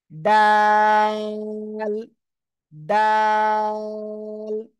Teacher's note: জিহ্বার আগা সামনের উপরে দুই দাঁতের গোড়ায় লাগান লাগান লাগান লাগিয়ে এবার উচ্চারণ করেন ডাল ডাল [মিউজিক] দাল তিন